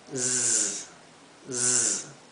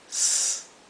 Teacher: la S se pronuncia como un zumbido, z, z, mientras que esta se pronuncia s, más como un silbido, como la S española